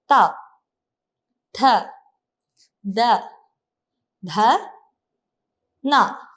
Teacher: പല്ലിന്റെ ഊരിന്റെ അവിടെയാണ് നാവ് ചെറുതായിട്ട് മുട്ടുന്നത് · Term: ദന്ത്യം